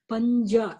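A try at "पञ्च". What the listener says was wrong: The first one is pancha. First one is pancha. Pancha. The first one, cha is there, and the second one, ja is there.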